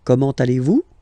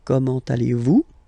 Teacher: it's a question, so raise a little bit your voice at the end